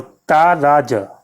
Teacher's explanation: ता रा में गुरु हो जाएंगे दोनों में, और जा में लघु